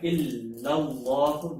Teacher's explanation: اس میں جلالت کا لام موٹا پڑا جائے گا